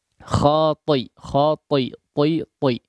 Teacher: jangan tercampur atau seperti huruf mad ya. Tetap jaga ketebalan huruf ta-nya